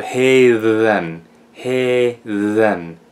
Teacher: because it's between two vowels it becomes a voiced th